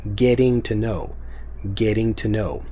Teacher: it becomes get to know get to know get to know it's still kind of a T sound but if you have the get ting it becomes more of a D